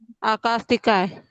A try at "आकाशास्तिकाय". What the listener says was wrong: तो आप पहले इसको ही बराबर बोलिए, आकाशास्तिकाय। आप श छोड़ रहे हो, आकाशास्तिकाय। अगर आप बोलते हो आकाशतिकाय, आप जब लिखोगे तब भी आप आकाशतिकाय ही लिखोगे, आप सिखाओगे तब भी आप आकाशतिकाय ही सिखाओगे, क्योंकि आपने बीच का शाह छोड़ दिया है।